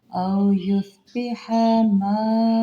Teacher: مد متصل 4 سے 5 حرکات آپ نے کھینچ کے پڑھنا ہے